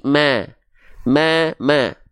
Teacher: tipiskan fathahnya ya sambil senyum